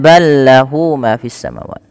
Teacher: ada idgham mutamatsilain, yang dimana ada huruf lam bertemu dengan huruf lam. Maka huruf lam yang pertama dimasukkan. Idgham artinya memasukkan, mutamatsilain itu mirip dari segi makhraj dan sifatnya sama, masuk.